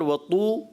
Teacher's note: وَطُورِ سِینِین مد عارض ہو رہا ہے آخر میں، تو مد پہ تو آپ کریں گے مد، مگر وطو یہ واو مدہ ہے، ایک الف کھینچنا ہے